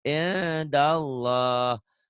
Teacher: Harus dibaca Ikhfa. ikhfa atau samar, bindeng ya